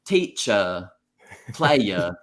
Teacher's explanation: Any American imitating British English will say like teacher, player, because that's when we think of British English, we take the R out